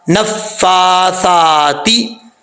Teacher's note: نون کے اوپر شد ہے، ایک الف کی مقدار یہاں پہ غنہ کریں گے، اور فا کے اوپر کھڑا زبر ہے، اس کو بھی لمبا کریں گے، سا کے اوپر کھڑا زبر ہے، اس کو بھی لمبا کریں گے.